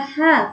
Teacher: Yang harusnya H itu makhrajnya keluar dari tengah tenggorokan, yang dia bersifat mengalir, bersifat hamas dan dia mulus, tidak ada kotoran. Kebanyakan dibaca H, H yang berat, H. Harusnya kalau H itu dia ringan, mulus dan dia mengalir sifatnya.